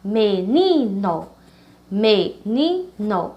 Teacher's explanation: a sílaba ni é a penúltima da palavra, por isso que ela é chamada de paroxítona